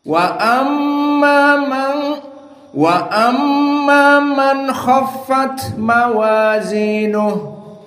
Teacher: Al-Kisai like the other imam, like Hafiz an Asim, nun sakinah after this kha is idhar. Idan nun here idhar.